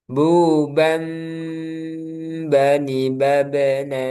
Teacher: Jadi tanwinnya berubah ke suara mim kemudian ditambah dengan ghunah. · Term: Iqlab